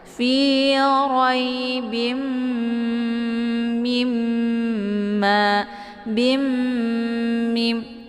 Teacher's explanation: dileburkan suaranya ke dalam huruf mim sambil didengungkan. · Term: idgham bi gunnah